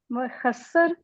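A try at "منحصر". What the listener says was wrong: मुखस्सर नहीं है, नून है वो। ये नून है।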